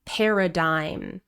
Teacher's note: The G here is completely silent, and the final vowel sound is I, paradigm. So paradigms affect how people see and understand the world around them.